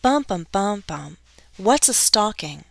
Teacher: my rhythm is created by stressing the two content words what's and stalking